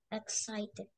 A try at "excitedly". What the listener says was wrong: Excited. Don't forget the li at the end. So not just excited. Excitedly. Excitedly.